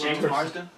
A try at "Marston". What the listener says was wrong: Marston. There's no D.